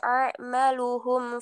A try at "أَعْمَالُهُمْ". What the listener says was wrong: Coba A-ma-nya dikasih panjang. A-ma, A-maluhum. A-ma. Terus taknya Mbak, kaf sama ta itu hampir sama. Kalau kaf jenengan kasih ka, ka. Lah, ta juga ta, ta. Agak seperti ada hamesnya. Ta, ta, ka, ka. Ka sama ta hampir sama. Jadi kalau hatta, hatta lah. Ka, kalau ka-nya sudah ada hamzahnya dengan ka, sudah seperti itu. Tapi ta-nya coba agak dikasih seperti ka juga nggih.